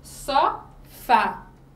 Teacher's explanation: As oxítonas, nós identificamos essa sílaba oxítona quando aparece, ó, a tonicidade é na última sílaba